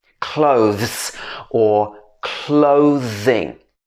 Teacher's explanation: Both of them have this z sound where your vocal cords are moving.